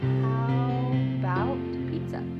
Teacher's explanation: The first A in the word about is gone. It's just missing. So we say, how about pizza?